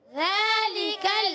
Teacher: زال کا مخرج زبان کا سرا اوپر کے دانتوں کے کنارے